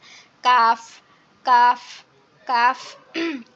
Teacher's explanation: আমাদের জিহ্বার গোড়া থেকে একটু আগে বাড়িয়ে তারপর আবার উপরের তালুর সঙ্গে লাগিয়ে, একটু কঠিন হয়ে যায় লাগানোটা, চেষ্টা করবেন।